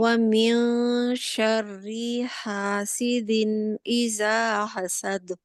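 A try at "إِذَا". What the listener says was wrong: زال نہیں ہے جی، نہیں سختی سے نہیں ہے، زال اذا نرم ہے جی، نرم ہے اور بریک لیٹر ہے، ٹھیک ہے۔ زا جی، جو زا ہے اس میں سختی پائی جاتی ہے، اس میں سیٹی پائی جاتی ہے، اس کا مخرج بالکل علیحدہ ہے، ٹھیک ہے۔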